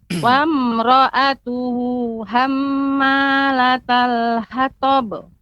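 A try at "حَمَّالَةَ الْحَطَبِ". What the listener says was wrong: Ya, pengucapan ha. terasa masih lebih tebal, lebih besar. Dikecilkan.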